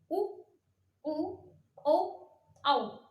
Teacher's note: उनका उच्चारण करते समय हमारे लिप्स जो है, हमारे होठ जो है आपस में टच होंगे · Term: वृत्तमुखी